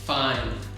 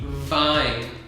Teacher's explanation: F is like the no voice. Yeah. And V has the voice. So if you touch your throat, It's vibration here.